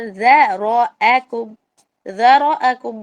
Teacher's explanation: ذرأكم میں صرف اور صرف را موٹا ہے